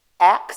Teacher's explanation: she says aks instead of ask, which is common in African American English